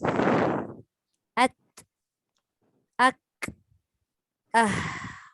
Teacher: sifat suara yang ada pada huruf kaf dengan ta itu sifatnya tertahan tapi dia melepaskan udara sahaja